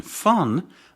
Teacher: the lower lip touches the upper teeth to produce a labod dental sound. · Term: labiodental sound